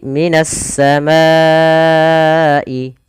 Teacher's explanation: ke huruf syin maka juga bisa dikenal dengan idgam Syamsiyah yaitu Alif lamnya diidgamkan ke huruf Sin · Yaitu alif lamnya diidghamkan ke huruf shin. Maka menjadi minas samai. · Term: idgham syamsiyah